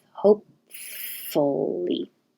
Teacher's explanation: You won't hear this P because you're closing your lips, and the next time you open them, it will be making the F.